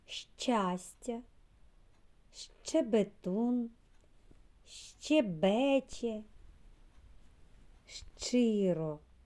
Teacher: це не звук а звукосполучення ш ч вимовляємо разом шч · звукосполучення шч вимовляється з перешкодами для видиху повітря і твердо словосполучення звуків ш та ч позначається однією літерою щч ось велика